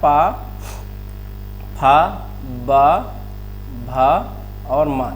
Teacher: पा फ ब भ और मा। ये ओठ से बोले जाते हैं।